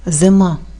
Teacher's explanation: останній склад зима голосний вимовляється з наближенням до е